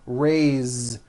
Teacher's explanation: even though it is spelled with an S it's pronounced with a voiced Z